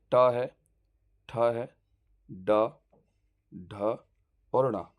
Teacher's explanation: जो जुबान हमारी तालु में उल्टा लगती है उसको मूर्धन्य ध्वनियां बोलते हैं